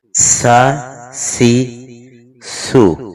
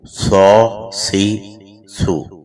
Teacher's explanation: اچھا یہاں ایک چیز ذرا توجہ دیجیے گا کہ سین کو اگر موٹا پڑھیں تو سیم وہی آواز صاد کی ہے، صرف فرق موٹا اور باریک ہے۔ تو سین میں درمیان والی زبان جو ہے وہ اوپر کی طرف جاتی تھی تالو کی طرف، لیکن صاد میں درمیان والی زبان جو ہے وہ نیچے کی طرف آئے گی